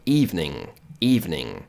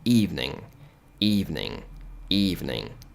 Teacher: Você posiciona a sua boca, né, ou a sua língua para pronunciar o G, mas ele é silencioso, você não pronuncia.